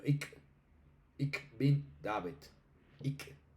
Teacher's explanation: sur de Alemania no encontramos sino un ik, ya no dicen ich ni ish